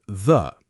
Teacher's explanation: Before a consonant sound, the gets pronounced the, short, quick, almost swallowed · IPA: /ðə/